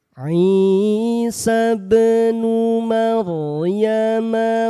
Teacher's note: Ba sukun hati-hati dibaca memantul pantulannya jangan terjeda